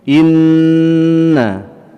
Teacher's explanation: Innama, kemudian di depannya ada hukum gunnah ya, nun musyaddadah gunnah dibaca ya dengan ditahan dua harokat serta dengung di dalam khayshum